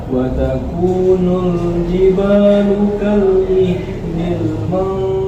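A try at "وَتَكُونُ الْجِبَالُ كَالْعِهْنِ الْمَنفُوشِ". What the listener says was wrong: Koreksinya di huruf H, al-'aini. masih kurang tipis. Ini man. Al-'ain.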